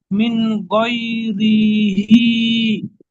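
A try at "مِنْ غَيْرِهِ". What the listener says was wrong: রি টান হয়ে যাচ্ছে। মিন গই, মিন গই।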